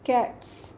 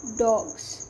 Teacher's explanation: जैसे देखें, एक वर्ड है cats and the second one is dogs. अब फर्स्ट केस में आपका जो लास्ट फनीम है ये आपको एस की ही साउंड दे रहा है, बट इन सेकंड केस अगर आप डॉग्स में देखो तो आपका जो ये लास्ट फनीम है एस, ये आपको जेड की साउंड दे रहा है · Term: assimilation